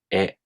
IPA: e